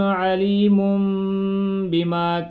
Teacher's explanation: آگے جب با آنا ہے تو وہ آواز پیچھے والی میم میں بدل جائے گی۔ اگر ویسے خالی پڑھتے تو علیم من ہونا تھا، میم کی جو آخر والی آواز آنی تھی وہ نون پہ ختم ہونی تھی، لیکن اب ادھر آگے با آ گیا ہے تو یہ آواز نون کے بجائے میم پہ ختم ہوگی۔